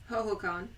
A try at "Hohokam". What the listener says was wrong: You said con. There's no N. That's an M.